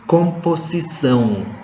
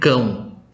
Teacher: Jadi ada bunyi nasal, bunyi sengau, yang berarti dalam bahasa Indonesia berbunyi NG.